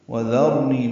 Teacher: واو ہونٹوں کی نا تمام گلائی سے ادا کریں گے